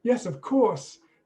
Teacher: intonation there yes of course says the waiter yes of course then you've got a falling intonation for a very definite statement